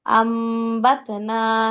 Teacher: হামজা মিম জবর আম, বা ত জবর বাত, সরি বা তা জবর বাত, নুন আলিফ জবর না, আমবাতনা, নুনটাকে মিম পড়তে হবে